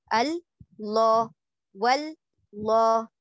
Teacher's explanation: پہلا لام موٹا نہیں ہے, پہلا لام باریک ہے, دوسرا لام موٹا ہے. تو ہم کیسے پڑھیں گے, اللہ, تو پہلے کو ال پڑھنا ہے نارمل, پھر دوسرے کو لا پڑھنا ہے, لا, جس طرح سے ہم انگلش میں LAW لا لکھتے ہیں اسی طرح سے لا آپ نے پڑھنا ہے, اللہ واللہ.